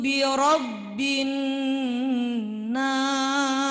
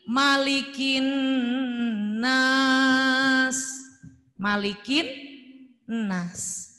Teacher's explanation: Alif lamnya ada tapi nggak dibaca. Idgham lam ta'rif syamsiyah. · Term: alif lam syamsiyah